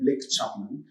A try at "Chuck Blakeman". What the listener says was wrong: You've literally reversed it. Chuck Blakeman. Chuck Blakeman.